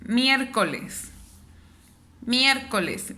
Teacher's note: miércoles es una palabra que tiene una sílaba tónica en la primera sílaba